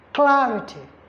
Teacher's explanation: The primary stress falls on CLA, clarity. So if you are counting from the word ends with TY And if we're counting from the end, ty syllable, ri syllable, then cla syllable.